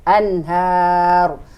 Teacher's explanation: Hanya adalah mad tabi'i karena fathah berdiri seperti tadi. Ro kita karena berhenti sukun, dibaca tafkim, dibaca tebal